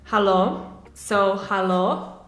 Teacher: how i would pronounce it would be a bit more stretched out and with the rising intonation